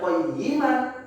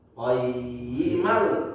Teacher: Gimana cara kita bacanya kalau ketemu idgham? Berarti kita lebur bunyi n-nya ke huruf la.